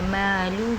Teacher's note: میم کے بعد خالی الف ہے، ایک الف امداد کھینچے گا، لام پر پیش ہے، ہا پہ الٹا پیش ہے، تو یہاں پر بھی ایک الف کی مقدار ہم کھینچیں گے